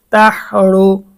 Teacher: তাহা জবর তাহ, র পেশ রু, তাহ রু, রু এখানে র এর উচ্চারণটা মোটা হবে।